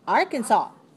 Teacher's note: 3 syllables. Stress the first. It's 3-1. Okay.